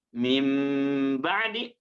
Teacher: panjangkan dua harakat dan larikan ke rongga hidung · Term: iqlab